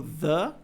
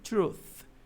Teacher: O the, que é aquele TH vozeado, e o truth, que é o TH não vozeado, né? Como se estivesse soprando só. Não tem aquele zumbido aqui da garganta, né?